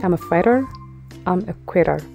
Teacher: አሜሪካኖች ብዙ ጊዜ I'm a fighter, I'm a quitter ብለው ነው pronounce የሚያደርጉት ter ሳይሆን ger